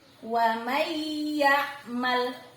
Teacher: Suara N hilang, melebur ke huruf yang ada di depannya, yakni suara huruf ya. Wa may ya'mal, ditekan kuat ya. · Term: idgham bi gunnah